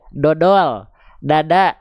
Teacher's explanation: biasanya ujung lidah bukan ke pangkal gigi seri atas, tapi ke langit-langit biasa aja. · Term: huruf D alfabet